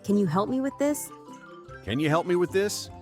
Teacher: Can you becomes can ya? Help me flows together like hell me.